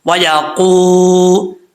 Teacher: واؤ ساکن سے پہلے پیش تو واؤ مدہ ہوتا ہے، ایک الف کی مقدار اس کو لمبا کریں گے